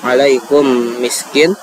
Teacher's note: huruf sebelumnya harus kita masukkan ke dalam huruf mim tersebut atau kita baca dengan gunah